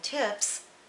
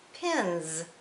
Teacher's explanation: suffix s can be unvoiced as in tips or it can be voiced as in pins